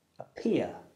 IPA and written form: əˈpɪə (appear)